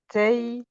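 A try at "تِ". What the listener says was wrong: Alors attention parce que toi tu dis taille ou ney, mais en fait il y a une kasra.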